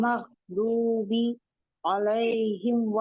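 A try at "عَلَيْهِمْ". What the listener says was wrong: आइन को मोटा नहीं करना, मुंह खोल दें और अपना बरीक करें, उसको जबड़ा भी नीचे लाए, अलैहिम अलैहिम,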